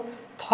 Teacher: परंतु थ एक ऐसा वर्ण है जिसका उच्चारण दांत से होता है। इसको हम लोग दंत्य वर्ण कहते हैं।